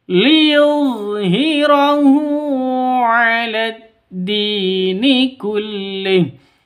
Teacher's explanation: Hu diperpanjang dua ketukan karena ada dammah terbalik.